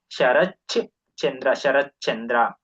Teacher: ತು ಇದ್ದಿದ್ದು ಕೂಡ ಚೂ ಆಗಬೇಕು ಅಂದ್ರೆ ತ ಇದ್ದಿದ್ದು ಚ ಆಗುತ್ತೆ ಶರಚ್ ಚಂದ್ರ ಶರತ್ಚಂದ್ರ ಅಂತ ಹೇಳಿ ಆಗುತ್ತೆ ಅದೇ ರೀತಿ ಜಗತ್ ಜ್ಯೋತಿ ಇಲ್ಲಿ